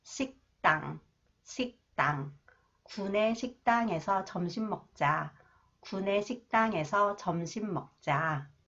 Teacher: when 디귿 follows the final consonants 기역 that is pronounced 그, it is pronounced 뜨 sound. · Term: 경음화